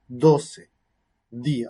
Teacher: La forma oclusiva, postdental, oclusiva sonora, postdental, es decir, la punta de la lengua detrás de los dientes, oclusiva, cierre y después salida abrupta del aire, y sonoro acompañado de vibración de cuerdas vocales